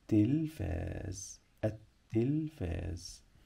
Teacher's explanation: حرف التاء بيسبق دايما لام شمسيه لا تنطق